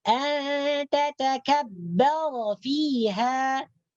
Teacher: An tatakabbara ini ra-nya dibaca tebal. Karena berbaris atas.